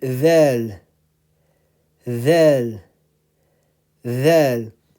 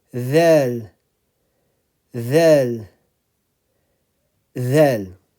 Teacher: the tip of the tongue is in between your front teeth.